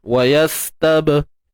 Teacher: Untuk ba ni qalqalah sughra tuan-tuan, lantunan yang kecil.